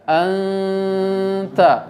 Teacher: Jadi nun sukun seakan-akan dia mau masuk kepada huruf ta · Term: ikhfa